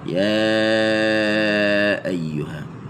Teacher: Panjangnya empat harakat. Panjang empat harakat.